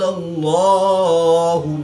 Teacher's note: لام سے پہلے حرف پر زبر ہے تو اس لیے اس لام کو پر یعنی موٹا پڑھیں گے